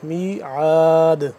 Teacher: میعاد آخر میں قلقلہ ہو رہا ہے کیونکہ دال ساکن ہو گیا